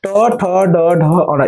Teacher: ये सभी मुर्धा होते हैं मुर्धा से बोले जाते हैं